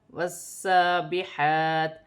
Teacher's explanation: واو سین زبر وس، سین کھڑی زبر سا، وس، با زیر بی، وسابی، حا کھڑی زبر حا، وسابح، تا زیر تی، وسابحاتی وقفاً وسابحات۔ وقف کی صورت میں زیر گر جائے گی اور تا ساکن ہو جائے گی